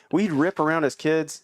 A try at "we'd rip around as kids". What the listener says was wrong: He said as kids, not his kids. It sounded like we rip around his kids. As- kids. I just wanted to, because somebody listening might be like, his kids?